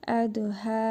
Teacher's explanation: Hə hərfində isə hərfi məd var. Bir hərf miqdarı uzadırıq.